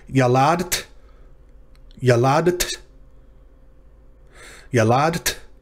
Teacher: you gotta make the d and the t sounds immediately following one another